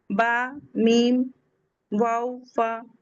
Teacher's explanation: तो ब और मीम का मखरज लिप्स से है। होठों से है। शफतान से है।